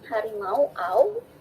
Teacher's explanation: U-nya berubah menjadi wah. Nah, AU di sini menjadi diftong.